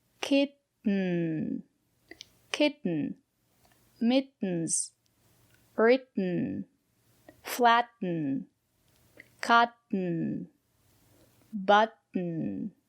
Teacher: we pronounce the letter t as a stop t put your tongue up and stop the air don't release the air stop the air · So it's a stop T and then it falls into n.